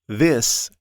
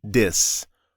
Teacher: For the voiced TH, learners often use a D sound. So this can sound like dis, or even a Z sound.